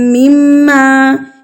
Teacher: یا رو، را زبر واو، رو، اولم یا رو انا خلقنا لهم مما، میم مشدد میم مشدد، دو مرتبہ میم مشدد، یعنی کہ ہم اس پر غنہ کریں گے